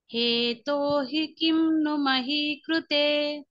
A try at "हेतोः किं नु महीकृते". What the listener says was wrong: హేతోహి కాదు, తోతో పాటు విసర్గ వెళ్ళిపోవాలి. హేతోః. హేతోః. అహీకృతే.